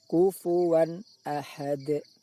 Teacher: Contoh bacaan izhar halki berupa tanwin bertemu hamzah. Bunyi tanwin harus dibaca jelas, tidak boleh dibaca dengung ataupun samar. Kufuwan, kufuwan ahad, seolah-olah antara bunyi tanwin kufuwan dengan bunyi hamzah ahad seolah-olah terpisah.